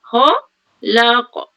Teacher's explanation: Sebut kha tebal kemudian nipis balik. La kemudian qaf tebal balik.